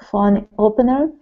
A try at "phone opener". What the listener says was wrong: No, it's not phone opener. It's phone opener. Those are separate words. They're not together.